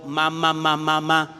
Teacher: Pero si yo le pongo, en vez de la lengua y los dientes, le pongo los labios, la misma A, digo ma